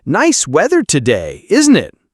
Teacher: nice weather today, isn't it? Uses a rising tone to invite response